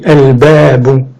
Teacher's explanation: Par exemple, je dis al-babu, il n'y a pas de gémination. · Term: lettres lunaires